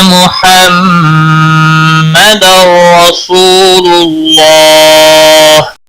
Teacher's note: تنوین کے بعد حروف یرملون کا را آیا ہے، ادغام ہوگا بلا گنہ، گنہ نہیں کرنا ہے۔ · محمد میم مشدد پر بھی گنہ ہوگا، گنہ کی مقدار 1 الف کے برابر ہوتی ہے